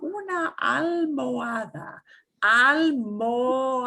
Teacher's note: And the O slides straight into the A.